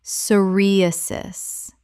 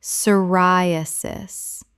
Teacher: The p is completely silent. Four syllables with stress on the second.